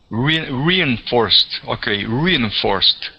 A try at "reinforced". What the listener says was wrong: All right, so the accent will go on the O. So instead of at the beginning saying reinforced, we're going to say reinforced. Forced. This ed will have a T ending, reinforced.